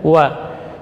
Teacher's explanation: Huruf waw, rakhawah dan jahar